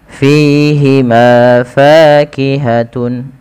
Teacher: Jangan dibaca dengan pihima. Artinya bibir kita merapat.